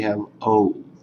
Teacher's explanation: It's a diphthong in English. If you think about it, it's O and then U put together. O. In Georgian, it's truly just O.